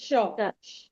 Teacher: जीभ का दोनों हिस्सा ऊपर दोनों तालु में सटता है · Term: तालव्य श